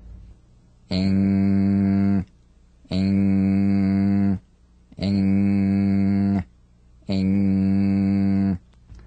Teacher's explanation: The NG is a voiced, tongue-backed, soft palate nasal consonant. So sing with the back of the tongue in contact with the soft palate. Back of the tongue to the soft palate. Vibration coming through the nose. Feel a twangy nasal resonance. · practice the final NG with no drum beat as the tongue leaves the soft palate at the end of the word.